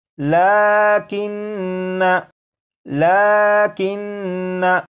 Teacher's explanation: नून मुशद्दद है इसमें गुन्ना करके पढ़ेंगे